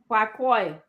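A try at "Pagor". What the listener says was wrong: G. It's a G, not K.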